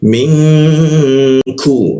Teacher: Ku posisinya di siku tenggorokan dia, lidahnya diturunkan. Ku ada hembusan udara.